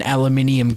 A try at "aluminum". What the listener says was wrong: No, it's not. It's aluminum. There's no I at the end. It's N-U-M, not N-I-U-M.